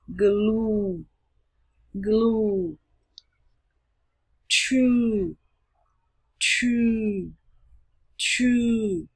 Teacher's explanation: Nguyên âm U dài được nói tròn miệng, U và kéo dài.